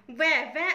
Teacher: आपके ऊपर वाले दांत और नीचे वाला होठ काम कर रहा है, यानी दांत भी और होठ भी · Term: दंतोष्ठ